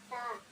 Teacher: நுனிநாக்கு மேல் முன் பற்களின் ஓரங்களை தொடும்போது வெளியாகும். நாக்கு பற்களை விட்டு சற்று வெளியிலிருக்கும் காற்று வெளியாகும்.